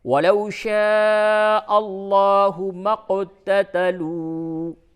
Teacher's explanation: قاف پہ تشدید جزم ہے، یہاں پہ قلقلہ ہوگا